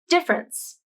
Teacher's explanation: the tongue tip is up at the alveolar ridge for the initial d consonant then the tongue moves down for the e vowel and the top teeth touch the bottom lip for the f consonant the lips round as you move directly to the r consonant